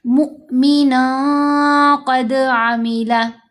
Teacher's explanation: नून की आवाज़ नाक में छुपेगी। साथ गुन्ना हफीफ यानी आवाज़ को लंबा भी करेंगे